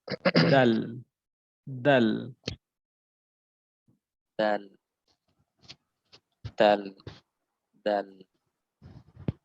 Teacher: জিহ্বার আঘাত থেকে পাতলা আওয়াজ, একদম নরমাল।